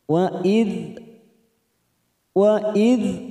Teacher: Dal sukun kita tahan jangan sampai memantul